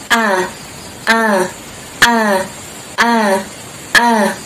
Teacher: huruf hamzah atau huruf alif ini ya keluar di tenggorokan yang bagian dalam atau pangkal · Bagian pangkal tenggorokan kita ini ketika kita sentuh pas mengucapkan huruf alif itu akan ada seperti getar, bukan getar, apa ya, gerakannya a, jadi kayak gerak gitu, a, a, a, a.